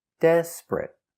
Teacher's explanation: 2 syllables. The stress is on the first syllable. Desperate. Not 3 syllables, desperate, but 2 syllables.